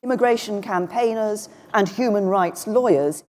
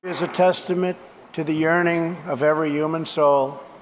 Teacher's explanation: For me, the words human, huge, and humour begin with a Hu sound. But in New York accents, the H is dropped and we're left with U.